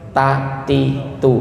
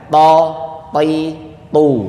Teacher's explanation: Huruf t itu Bapak Ibu sadar atau enggak, itu ada angin yang keluar sedikit.